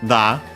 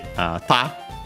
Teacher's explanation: Hanada on its own is technically a compound word from Hana, flower, accent on the last more. And then we have this da, which is actually ta. Then voiced because it's the second word part of a compound